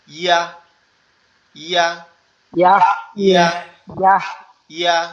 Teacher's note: জিহ্বার মধ্যখান উপরের তালুর সঙ্গে লাগবে, লেগে হালকা নরম আওয়াজে